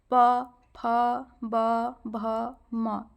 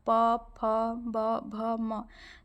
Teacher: आप बोलेंगे ना प फ ब भ म तो आप देखेंगे आपके जो दो होठ है वह एक दूसरे को छू रहे हैं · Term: ओष वर्ग